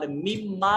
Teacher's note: اور مما میں یہ اصل میں من ما تھا. نون اور میم قریب المخرج 2 حروف اکٹھے ہوئے پہلا ساکن دوسرا متحرک تو پہلے کا دوسرے میں ادغام کر دیا اور نون میم میں شامل ہو گئی اور شامل ہونے کے بعد پہلی میم کو دوسری میم میں ملا دیا.